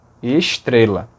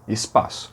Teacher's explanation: O S antes de T chia.